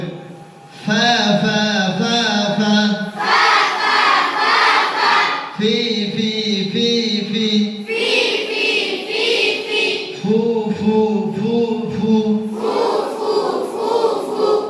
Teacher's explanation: উপরের দুই দাঁতের আগা নিচের ঠোঁটে পেট লাগিয়ে বলতে হবে বাতাস চালু করে সব সময় যেখানে আপনি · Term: বাতাস চালু হরফ